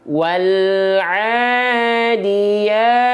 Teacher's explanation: mad tabi'inya 2 harokat, konsisten, nggak kurang, nggak lebih, nggak kepanjangan, nggak kependekan, diayunkan satu kali, diayunkan saja.